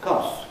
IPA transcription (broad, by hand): kɒss